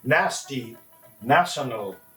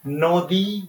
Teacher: Dantanno means your tip of the tongue touches the back part of your teeth, and then the sound is produced.